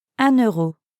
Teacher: listen to the liaison between un and euro